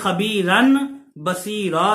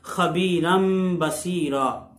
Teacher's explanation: ایسے ہی اس کی ایک اور مثال خبیرم بصیرا، اصل میں خبیرن بصیرا تھا، تو یہ ایسے پڑھنا ثقل ہے، تو نون تنوین کے بعد با آ گیا ہے، تو خبیرن کی جو تنوین ہے اس کو میم سے بدل کے اقلاب کر کے غنے کے ساتھ پڑھیں گے تو بن جائے گا خبیرم بصیرا۔